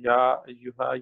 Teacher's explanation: ہاں جی، اس کے بعد یا پہ مشدد ہے، یہاں زور دے کے پڑھا جائے گا، اور ہا کے بعد الف مد آ رہا ہے، دو حرکت دی جائے گی